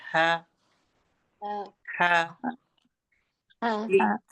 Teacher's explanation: हलफ के आखरी हिस्सा जो सीने की तरफ होता है वहां से ह और हमजा अदा होता है।